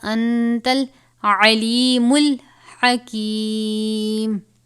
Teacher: یہاں پہ نون ساکن کے بعد تا ہے اخفا میں سے، تو یہاں پر اخفا کا قاعدہ لگے گا